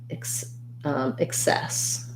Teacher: in excess we have second syllable stress so um we have the unstressed if sound